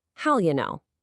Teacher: Hear how and will just blend into one seamless sound